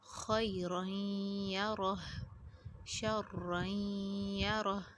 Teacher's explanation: غننے کے ساتھ یہاں پہ ادغام ہو رہا ہے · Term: غننے کے ساتھ ادغام